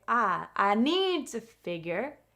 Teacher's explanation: we don't stress the subject I. We just say I I need to figure I I need to.